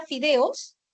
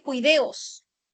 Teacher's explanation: la consonante fricativa labiodental sorda se ve reemplazada por la fricativa velar.